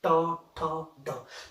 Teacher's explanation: जो जुबान है उसको क्या करते हैं, फोल्ड करते हैं, ट ठ ड, तो उसको हम क्या बोलते हैं, मूर्धा व्यंजन।